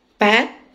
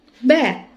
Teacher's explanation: P is a voiceless bilabial plosive. B is a voiced bilabial plosive. Both are produced using both lips.